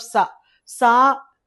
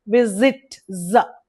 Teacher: is the sound of sa sa s is a voiceless z is a voiced sound that's the difference